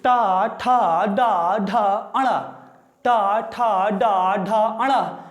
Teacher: मेरे दोस्तों इनको जब आप बोलेंगे तो महसूस करेंगे कि ये ध्वनियाँ मूर्धा से आ रही है। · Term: मूर्धन्य